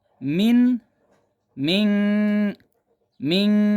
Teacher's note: نون کی آواز کو ناک میں لے کے جا کے چھپانا ہے